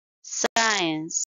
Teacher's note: it's two syllable word and stress is on the first syllable